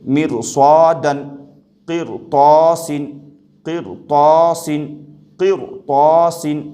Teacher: مرصادن، یہاں پر رائے ساکنہ سے پہلے بھلے ہی زیر ہے، لیکن اس کے باوجود یہ رائے ساکنہ باریک نہیں ہوگی بلکہ پر ہوگی۔ مرصادن، قرطاسن، قرطاسن، قرطاسن، رائے ساکنہ کو پر پڑھیں گے، قرطاسن نہیں بلکہ قرطاسن۔